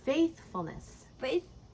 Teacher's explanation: The stress is on faith.